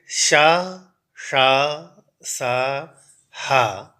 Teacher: अपेक्षा इनमें थोड़ी सी शक्ति लगती है ताकत लगती है और इनको कहने पर एक विशेष बल सा लगता है घर्षण सा होता है इसलिए इन्हें संघर्षी व्यंजन भी कहा जाता है